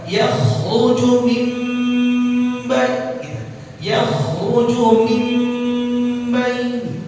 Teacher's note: Iqlab. Jadinya dia iqlab. Gunnah dibaca 2 harokat.